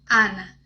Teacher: no espanhol existe apenas um som, que é o A aberto